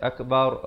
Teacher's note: Tapi dalam Al-Quran di sini tak boleh baca akbar, kena baca akbar, ra-nya dibaca tebal